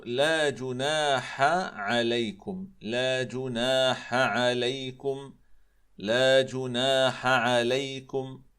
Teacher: فالحاء والعين إخواني الكرام حرفان حلقيان من وسط الحلق، من منطقة لسان المزمار. كلاهما، كلا الحاء والعين، يحصل برجوع شديد للسان المزمار إلى جدار الحلق، إلا أن رجوع لسان المزمار إلى جدار الحلق في العين أكثر منه في الحاء. فالحاصل إخواني الكرام أن هذين الحرفين بما أنهما من وسط الحلق الحاء والعين، فيحصل الخلط بينهما خاصة في هذا المثال وما شابهه.